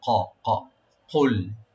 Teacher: কাফের উপরে একটু ফোকাস দিবেন, কাফটা যেন মাখরাজ থেকে আসে। এই কাফের মাখরাজ হলো জিহ্বার গোড়া থেকে, এন্ড অফ টাং, জিহ্বার গোড়া থেকে যেন আসে, যেন উপর থেকে যেন না, উপর হলে ছোট কাপ হয়ে যাবে।